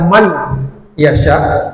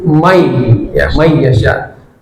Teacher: idghamnya adalah menghilangkan nun sukunnya. Jadi tidak dibaca man yasya tapi may ya may yasya tapi dengan ghunah.